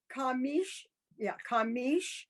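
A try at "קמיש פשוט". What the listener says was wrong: Remember, it's ki. Kemish pechot. Kemish pechot. Let me point out the reason why I'm very particular about like the beginning of that word is ki, not ka, because because changing the vowel changes the meaning.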